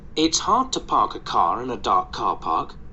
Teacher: so as you see all these r's are silent they're silent because it's in British